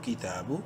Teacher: ایک الف برابر لمبا کریں گے، تا کو کھڑی زبر کی وجہ سے